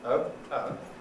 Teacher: in real life you go oh no and there's not much movement